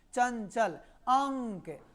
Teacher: चंचल जब आप बोलेंगे तो नाक में जो है झंझनाहट उत्पन्न होगा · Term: अनुस्वार